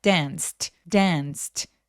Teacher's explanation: 성대가 울리지 않는 무성음이라고 하는데 성대가 울리지 않는 소리로 끝났죠. · ed도 t로 무성음으로 발음합니다. 성대가 안 울리게